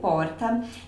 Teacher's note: Quando eu falo porta, eu vibro a pontinha da língua. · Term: R de São Paulo